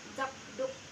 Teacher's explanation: Ketika kedua itu digabung sehingga menjadi zakdoek sapu tangan diucapkan zakduk. Bunyi K pada zak berubah menjadi G velar bersuara karena dipengaruhi oleh bunyi D yang mengikutinya